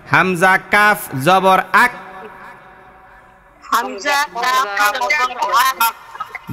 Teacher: ছোট কাফের উচ্চারণ করার ক্ষেত্রে কোনো ধরনের প্রতিধ্বনি হবে না, না, কোনো প্রতিধ্বনি হবে না, জাস্ট থেমে যাবেন।